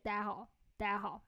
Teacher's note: There's a super short, quick 家 there. Yeah, but you will hear Beijing people say 大家好, 大家好. So we just completely omit the J sound.